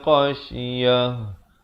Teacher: ta marbutah sahabat-sahabat bunyikan dengan ha.